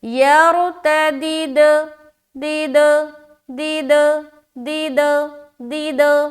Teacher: دال ہے، تو اس دال کو جب اس دال سے ملائیں گے تو ہم کریں گے کیا؟ قلقلہ، یعنی کہ آواز کو ٹکرائیں گے۔ تو کیا پڑھیں گے؟